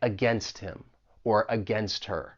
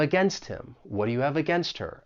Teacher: we can link that final t in against with the vowel sound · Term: elision